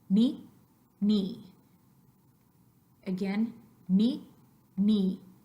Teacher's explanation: the only difference is not the sound you're making it's how long you hold it out